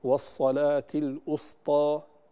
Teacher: الخطأ الأول في الواو المضمومة، فالبعض يحول الواو المضمومة إلى همزة فيقول والصلاة الأسطى. الأسطى هذا خطأ، تحولت الكلمة من الوسطى إلى الأسطى، وهذه كلمة أخرى مختلفة تماما.